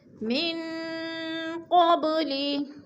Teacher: نون ساکن کے بعد قاف حروف اخفا میں سے ہے تو ادھر اخفا کریں گے، ناک میں آواز کو چھپا کر پڑھیں گے